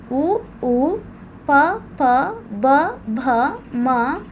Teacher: ತುಟಿಯಲ್ಲಿ ಹುಟ್ಟುವುದರಿಂದ ಇವನ್ನ ಓಷ್ಟ್ಯಗಳು ಅಂತ ಕರೀತೀವಿ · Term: ಓಷ್ಠ್ಯ